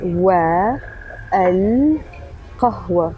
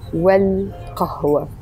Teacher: the words are wa al-qahwa, but we're joining them together and it becomes wal-qahwa